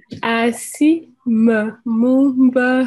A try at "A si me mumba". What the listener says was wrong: Ce n'est pas me. Ce n'est pas me.